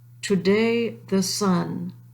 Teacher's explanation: the most common foot, which is an IAMB, and that's unstressed stress